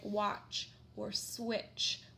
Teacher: the T doesn't really make a sound and it's just that CH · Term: CH sound